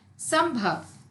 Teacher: इस शब्द में अनुस्वार अंग का उच्चारण अ और म जैसा हुआ है